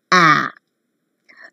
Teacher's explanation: the front part of the tongue is between open and half open